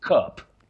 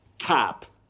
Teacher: that u takes what we call the short mid central sound